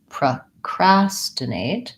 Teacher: And because it's second syllable stress, my PRO does not have a clear vowel. It sounds like pr.